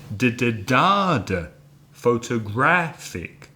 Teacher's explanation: 4 syllables, but this time the third syllable is stressed.